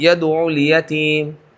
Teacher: عین کے اوپر تشدید ادا نہ ہوئی